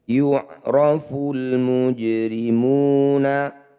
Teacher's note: Jim sukun di tengah bacaan disebut bacaan qalqalah. Namanya qalqalah sughra, bunyi jim dipantulkan tapi jangan berlebihan.